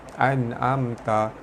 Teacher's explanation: nun mati bertemu ain, hukum dia izhar halki. Cara baca dia terang jelas tanpa dengung